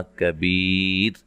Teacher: جب وقف کریں گے تو را کو باریک پڑھیں گے، ٹھیک ہے۔ وقف کی صورت میں را ساکن ہو جائے گی، اور را ساکن سے پہلے یا ساکن ہے، لہذا را کو باریک پڑھا جائے گا۔